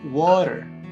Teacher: la T de water, que casi se lee como una R